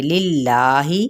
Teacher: اس میں جلالہ کا لام باریک پڑے جائے گا